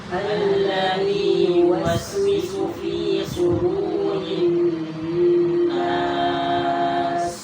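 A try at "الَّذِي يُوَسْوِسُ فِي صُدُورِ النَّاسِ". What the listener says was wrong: Di situ sod, bukan sin, bukan huruf sin. Jadi harus dibaca sudu. Alladzi yuwaswisu fi sudurin nas.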